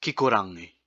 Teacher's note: what we want is that g sound at the back of the throat